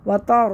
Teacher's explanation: बनना तो में बदल जाएगा, तो नहीं बनना है, व तारो, ता को बारीक पढ़ना है, रा को मोटा पढ़ना है